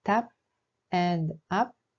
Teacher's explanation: The consonant 'ㅂ' has a pronunciation like 'b' but if used as the final consonant, the pronunciation becomes like 'p'.